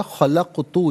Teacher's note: یہاں قاف ساکن ہے، یہاں قلقلہ کیا جائے گا